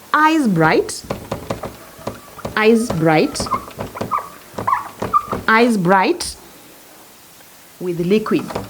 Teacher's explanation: the choice of the word bright came as a result of the vowel in eyes, so that we have assonance